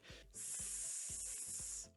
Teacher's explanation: Some people, especially women who are interested in recordings, doing like voice work and things like that, what they may find is that they have slight problems with the S. It creates what's called a sibilant S, or like a very strong hissing sound like S. This is because in general for S sounds for women, they tend to be pronounced closer to the tooth, whereas for men, it tends to be a lower, more resonant sound.